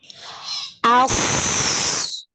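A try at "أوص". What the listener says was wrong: Iya, ulang lagi. Nggak boleh monyong mulutnya.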